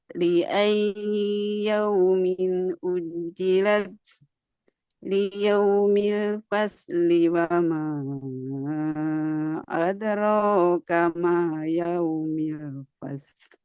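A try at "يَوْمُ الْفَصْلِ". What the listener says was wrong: Yaumul fasl. Domah, yaumul fasl. Ya, afwan Ibu, boleh diangkat lagi ya nadanya. Mungkin Ibu barusan kurang tinggi sehingga di sini kerendahannya, di datarnya, maaf, di nada turunnya kerendahan. Nanti suaranya tidak stabil ya. Apa namanya, cepat habis gitu.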